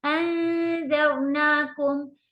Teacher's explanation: نون کو کھینچتے وقت ہم نے زبان کو باہر رکھ لیا تھا